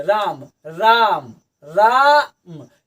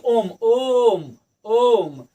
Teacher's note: दीर्घ स्वर से ज्यादा जिसमें समय लगे उसे हम प्लुत स्वर कहते हैं। जैसे ओम, या किसी के नाम मतलब पुकारने में जिस शब्द या जिस वर्ण का प्रयोग करते हैं उसे हम प्लुत स्वर कहते हैं।